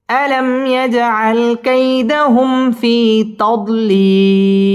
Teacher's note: মিম সাকিন ইজহারে খাস, ইয়াজ জিম কলকলার হরফ ধাক্কা দিয়ে পড়তে হবে